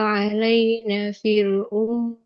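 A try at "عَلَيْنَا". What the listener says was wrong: Alaina, nunnya panjang ya. Alaina.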